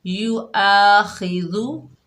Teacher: دال کو نرمی سے ادا کریں گے، خو کو موٹا ادا کریں گے